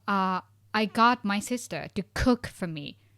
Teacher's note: So pronunciation is we put the stress on main verb.